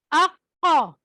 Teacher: قا یعنی حلق کے وہ والے حصے سے جہاں پہ گوشت کا ٹکڑا لٹک رہا ہوتا ہے وہاں سے ادا ہوتا ہے اقا. اسی طرح کاف اکا، قاف موٹا حلق سے نکلنا ہے، موٹا پروناؤنسیشن ہونی ہے، اور کاف کی پروناؤنسیشن باریک ہونی ہے.